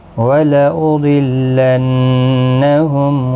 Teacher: ضاد حروف مستعلیہ ہے، پر پڑھا جائے گا۔ تشدید والے حرف کو سختی کے ساتھ پڑھیں تاکہ تشدید ظاہر ہو۔